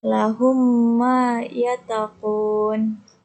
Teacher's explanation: Yang pertama, idgham mimi atau idgham mutamasilain adalah idgham yang terjadi apabila huruf mim mati bertemu dengan huruf mim dan cara melafalkannya adalah dengan membaca huruf mim rangkap secara mendengung